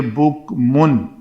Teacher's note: یہاں پہ میم ہے لیکن اوپر تنوین کی وجہ سے یہ من ہو جائے گا۔ من کی نون ساکن کے بعد حروف حلقی میں سے حمزہ ہے تو اس نون کا اظہار کریں گے